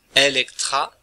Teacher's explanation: il s'agit d'un e long que la tradition nous invite à prononcer en e